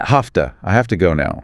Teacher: have to frequently reduces to hafta